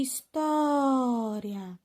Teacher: história a sílaba mais forte é a penúltima